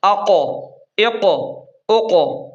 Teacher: قوف کو موٹا پڑھیں گے اور قوف کو تھوڑا سا ہلائیں گے یعنی قلقلہ کریں گے۔